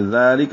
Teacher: ذالک میں ذال کو 2 حرکات لمبا کریں گے، کھڑا زبر ہے، الف مدہ. کاف لام دونوں باریک ہیں.